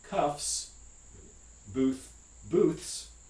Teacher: the non-sibilants this is the labiodental and the uh interdental fricative these take a plural form that's just an alveolar fricative · these take a plural form that's just an alveolar fricative, sa. So cuff, cuffs, booths.